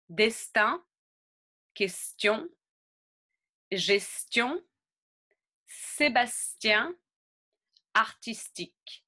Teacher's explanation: So, there's a little pause at the S and then we add the T and the I.